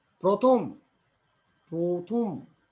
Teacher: র ফলা যুক্ত আদ্য অ এর উচ্চারণ ও এর মতো হয়।